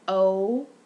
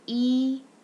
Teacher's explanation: So we have O, that's rounded, and then E, not rounded